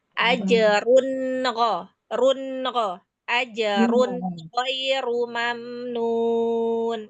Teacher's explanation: yang run jelas mau ketemu huruf tenggorokan namanya izhar halqi